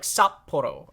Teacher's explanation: like you know how when you have a long vowel sound the double letter is essentially the equivalent of like a long consonant sound